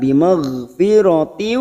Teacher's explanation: huruf ghain bukan qalqalah kita tahan. Bimaghfiratin, kasar tanwin bertemu waw idgham bi gunnah siap masuk pada huruf waw dan ditahan selama 3 harokat.